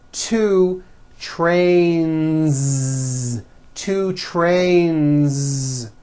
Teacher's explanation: Two trains with a voiced Z ending.